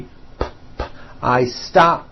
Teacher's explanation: stop ends with an unvoiced P.